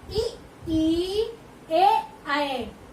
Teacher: अग्र का क्या मतलब होता है? आगे, यानी जिह्वा के अग्र भाग से उच्चरित होने वाले स्वर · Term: अग्र स्वर